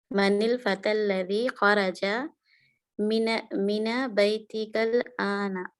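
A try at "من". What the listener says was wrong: मीना क्यों है? मिन बैती का, मिन है ना। जबर तब लगेगी, जबर तब लगेगी, लेकिन जब सब जगह आपको जबर लगा के दी हुई है इन्होंने। जबर तब लगेगी जब आगे अलिफ लाम आएगा। मिनल बैती, मिनल बैती।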